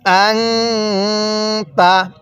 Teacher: নুন সাকিনের পরে তা হলো ইকফার হরফ তাহলে নুন সাকিনটা গুনাহ করবো